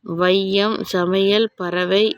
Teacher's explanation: சொற்களின் முதல், இடை, இறுதி ஆகிய இடங்களில் வரும் போது தனக்குரிய 2 மாத்திரை அளவிலிருந்து குறைந்து ஒலிக்கிறது. இவ்வாறு குறைந்து ஒலிக்கும் ஐகாரம் ஐகார குறுக்கம் எனப்படும்.